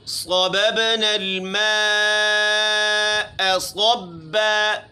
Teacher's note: غنہ ہے نون مشدد میں، صاد موٹی پڑھنی ہے اس کو